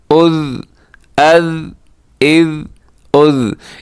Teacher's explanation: ہلانا نہیں ہے آپ نے, بلکہ آواز آپ کی رک جائے, آواز بند ہو جائے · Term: ذال